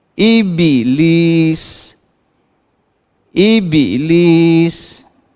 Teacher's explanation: Karena sebelumnya kasrah, maka bunyi pantulan ba-nya pun berbunyi kasrah.